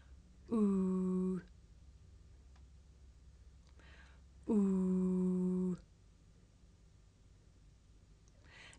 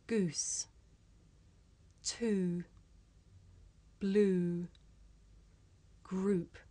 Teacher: this is a long vowel sound it's pronounced ooh